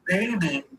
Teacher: you're closing off your air with both lips. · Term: bilabial stop